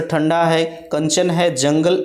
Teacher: अनुस्वार के उच्चारण में वायु नाक से निकलती है और उच्चारण झटके के साथ होता है, जैसे ठंडा है, कंचन है, जंगल इत्यादि आपके अनुस्वार के अंतर्गत आते हैं।